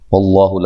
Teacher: لفظ اللہ سے پہلے حرف پر زبر ہے، اس کو موٹا ادا کریں گے